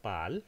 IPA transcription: paːl